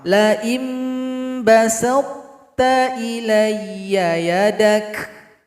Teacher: Ada sisa dari sifat itsbaqnya, masih ada antara lidah dan langit-langit berkumpul suara. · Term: idgham naqis